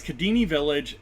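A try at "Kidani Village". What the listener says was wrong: It's an A in there, buddy. It's Kadani Village.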